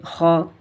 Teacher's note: ये हुरूफ़ मुस्तालिया में से है, इसे हम मोटा करके पढ़ेंगे। हा, ये इसके भी मखरज का हम ख़ास ख्याल रखेंगे।